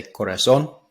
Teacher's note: they're putting that emphasis on the cor which is kind of an anglicized way of saying my Corazon